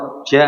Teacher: jam'a salah jadi murni dari tengah lidah yang ditempelkan ke langit atas secara rapat dengan rapat coba ja rasakan coba tengah lidah kita naikkan ke